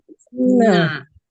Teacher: Ketika Bunda baca na tadi, Bunda menekan ujung lidah Bunda ke gusi atas.